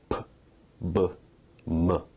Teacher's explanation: Bilabial sounds are produced with both lips, like p, b, m.